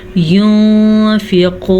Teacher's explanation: इख्फा का मतलब है छुपाना, यानी नून की आवाज़ को छुपा के पढ़ेंगे